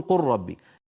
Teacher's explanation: إذا رأيتموها هي مدغمة، ما أحد يظهر اللام عند الراء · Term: إدغام اللام في الراء